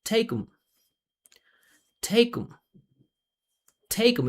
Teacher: we don't pronounce this th to make the reduction. All I'm going to do is just start my voice and I'm going to slide into the M.